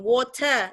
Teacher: R itu nggak dibunyikan, mau di tengah, di belakang, itu biasanya nggak dibunyikan